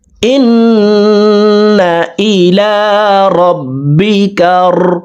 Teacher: নুন হরফকে এক আলিফ টেনে পড়ব। উপরের দিকে ধাবিত করে এক আলিফ টেনে পড়ব।